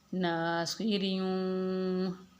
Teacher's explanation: را پہ چونکہ زیر ہے تو اس کو ہم باریک پڑھیں گے